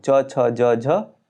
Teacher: जिन वर्णों के उच्चारण में जीवा तालू को स्पर्श करती है उन वर्णों को तालव्य कहते हैं